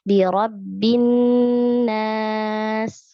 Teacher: Nah, di sini ada lam ta'rif bertemu dengan nun, maka tidak terbaca ya lam ta'rifnya. Jadi langsung ke nun yang tasydid, kita tahan 2 harokat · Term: gunnah